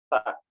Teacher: Yang keempat adalah terbuka atau al-infitah di sini. Lalu juga cara pengucapan huruf sa itu adalah dengan ujung lidah kita sedikit dikeluarkan ya, sedikit dikeluarkan dan lidah bertemu dengan ujung gigi.